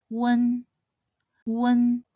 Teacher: This is a nasal final, so just start by sounding out the U final and close into an N sound at the end. It sounds similar to the sound in the word moon.